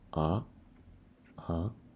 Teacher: second tone as a sound that go up